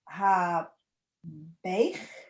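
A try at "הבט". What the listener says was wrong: Again, it's the T. So remember, you've got two T's in Hebrew. The one's got a toe and the other one's got a hole at the top.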